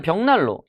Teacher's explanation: 그래서 기억이 이응으로 변한 거고요. 얘는 리을이 니은한테 영향을 줘서 니은이 리을로 변한 겁니다. 둘 다 역행적이라고 볼 수가 있겠죠.